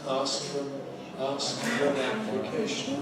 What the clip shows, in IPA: ˈɑːsk fər ən